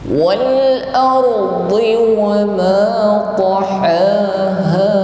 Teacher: ra yang berharokat sukun di sini diucapkan dengan bunyi tafkhim, tidak sekedar bergetar